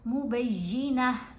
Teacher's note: یہ جب گول تا کے اوپر وقف آتا ہے نا، یہ والی جو تا ہے یہ تمربوطہ تا ہوتی ہے، اس کے اوپر جب ہم وقف کریں گے تو پھر ہم تا کو سائلنٹ پڑھیں گے، تا کی آواز نہیں ہوتی، پھر یہ ہا کی آواز دیتی ہے